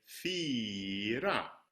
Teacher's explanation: you don't do the lip rounding and you say fira